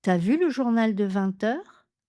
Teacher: il fallait faire la liaison en T.